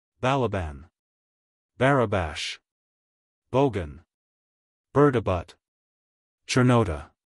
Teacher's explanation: the following names of men are accented on the last syllable